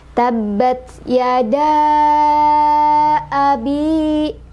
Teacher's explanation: Jadi si mad sama hamzahnya berada dalam dua kalimat yang berbeda. Sehingga cara baca dari mad jaiz munfasil ini dipanjangkan boleh 4, boleh 5 harokat